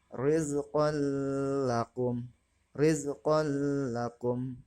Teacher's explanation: Yang kedua yaitu idgham bila gunnah, yang mana artinya idgham bila gunnah adalah idgham yang tidak menggunakan gunnah atau tidak berdengung dalam pembacaannya. Patokan dalam menentukan idgham bila gunah adalah ketika nun sukun dengan tanwin bertemu dengan salah satu huruf idgham bila gunah, yang mana huruf idgham bila gunah tersebut terdiri dari dua makhraj.